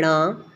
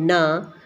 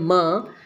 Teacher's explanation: हर वर्ग का जो पांचवा वर्ण होता है उनका उच्चारण स्थान नासिका होता है